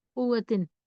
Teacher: اگر واو کو سختی سے نہ پڑھیں تشدید کا خیال رکھتے ہوئے تو عام طور پر آواز قوتن ایسی ہوتی ہے اور تشدید رہ جاتی ہے